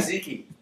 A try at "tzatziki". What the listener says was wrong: Because there's an extra T in there.